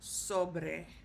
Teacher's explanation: the stress is going to go on the O, sobre. All right.